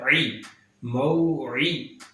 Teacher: عین کو درمیان والے حلق سے ادا کیا جاتا ہے